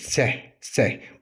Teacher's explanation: bu i, y, x üç səsin hər üçündən azalcıq istifadə etməklə səslənməlidir.